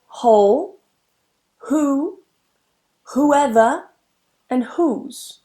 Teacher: I don't pronounce that W. They all start with a H sound.